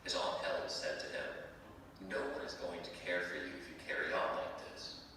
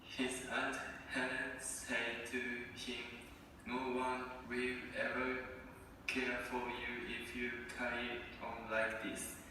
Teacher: You can hear it's a lot less fluent, yes? There are breaks, there's lots of hard attack, and you can see there are a lot fewer linking marks than I've used for the native recording.